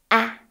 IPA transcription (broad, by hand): æ